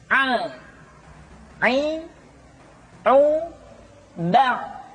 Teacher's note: pengucapan huruf A dikeluarkan dari tengah-tengah tenggorokan seperti kita mengucapkan huruf H. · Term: huruf Ain